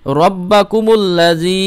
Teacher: বা এর উপর তাজদিদ রয়েছে এজন্য র এর সঙ্গে বা মিলছে